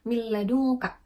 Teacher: ee dua huruf idgam bilagunah yaitu huruf lam dan juga ro cara membacanya yaitu dengan meleburkan kedua huruf tapi dengan tanpa diiringi dengung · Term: Idam bilagunah, idgham bila gunnah